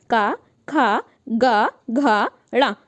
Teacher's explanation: इनका जो उच्चारण है वो हम लोग करते हैं कंठ की सहायता से। कंठ मतलब होता है गले की सहायता से। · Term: कंठ वर्ण